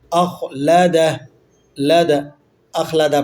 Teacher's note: مالہ خا موٹا ہوگا، اخلدہ، ٹھیک ہے، خا حروف تفخیم میں سے ہے، اسے پر کر کے پڑھا جاتا ہے، موٹا پڑھتے ہیں، اخلدہ، اخلدہ پڑھ لیتے ہیں، اخلدہ نہیں ہے، یاد رکھیے گا، اخلدہ، خا کو آپ موٹا نہیں کریں گے تو خا ادا نہیں ہوگا، ٹھیک ہے۔